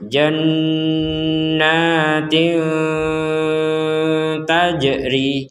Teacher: kasrotain ya atau tanwin, kemudian bertemu dengan huruf ta. Nah, huruf ta di sini maka kita membacanya dengan samar.